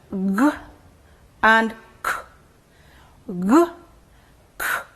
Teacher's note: these are sounds that are produced by raising the back of the tongue to the soft palette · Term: V sounds